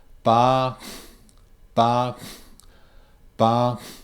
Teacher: I'm almost snorting out of my nose and I can feel air going through my nose my coming out of my nose bah I can feel it